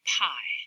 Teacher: closed and the same big waveform for the vowel I but before the vowel there's this noisy burst of turbulence that's the aspiration on the pea